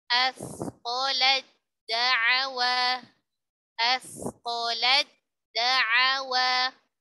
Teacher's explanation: Ta-nya dileburkan sempurna ke huruf dal. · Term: idgham kamil